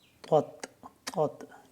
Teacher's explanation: طا کو ہم جب پڑھیں گے موٹا پڑھیں گے، تا کو ہم باریک پڑھیں گے